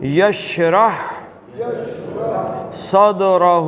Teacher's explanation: دال کلکلے کا ہے اس لیے یہ جھٹکا ہے